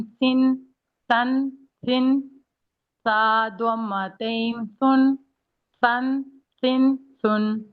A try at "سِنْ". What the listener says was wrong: رکنا نہیں ہے، سن، سن، سن، ٹھیک ہے، بیچ میں پوز نہیں دینا.